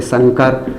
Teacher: अनुस्वार नाक से उच्चारण किया जाता है, नाक मुख दोनों से किया जाता है।